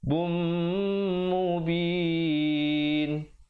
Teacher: Azabum, di situ hukumnya idgham bi gunnah, tanwin bertemu mim, dengungkan 2 harakat.